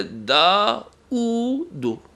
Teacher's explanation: واو کے اوپر جب حمزہ آ جائے تو واو کو نہیں پڑھیں گے، حمزہ کو پڑھیں گے